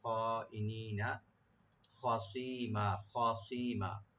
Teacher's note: খটাকে deep করে পড়তে হবে, সটাকে রাইট দিবেন। আর মিম এখানে আমরা একালেপ টেনে ছেড়ে দেব, মধ্যে আরজি হয়ে যাবে, মধ্যে আওয়াজ হয়ে যাবে।